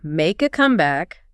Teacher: But when it's the noun, the idiom, we say make a comeback. The stress hits really hard on the first syllable. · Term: stress pattern